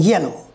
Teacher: the front of the tongue approaches the hard palate the roof of the mouth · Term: palatal sound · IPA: /j/